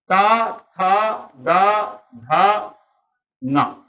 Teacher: जीभ का अगला सिरा दात के दोनों बीच में है और दात जैसे बैठे उच्चारित हो जाए